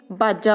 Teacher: ਜੋ ਦੁਆਬੇ ਇਲਾਕੇ ਦੇ ਲੋਕ ਨੇ ਇਹ ਵਾਵੇ ਨੂੰ ਬੱਬਾ ਅੱਖਰ ਨਾਲ ਬੋਲਦੇ ਨੇ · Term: ਦੁਆਬੀ ਉਪਭਾਸ਼ਾ